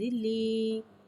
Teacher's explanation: یا مدہ کو ایک الف یعنی 2 حرکات کے برابر کھینچ کے پڑھیں گے اور زیر کو نیچے گراتے ہوئے ادا کریں گے. لام یا زیر لی.